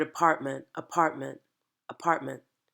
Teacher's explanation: So in this lack of linguistic detail, we're not going to hear our NTs, like in the word apartment, apartment, apartment. You don't hear the middle T, you don't hear the NT.